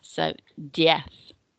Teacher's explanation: the Z on the end of diez is a th sound as well, rather than a Z. So diez.